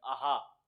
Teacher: हा बोलोगे तो हा में जीभ कहीं नहीं लग रही, सीधे गले से आ रहा है ये कंठ, आहा।